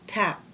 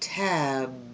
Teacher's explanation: that you do the same thing with your mouth PB but the difference is on the B you use your voice or your vocal cords